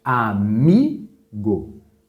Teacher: a palavra Amigo qual que é a sílaba mais forte o Mi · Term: paroxítona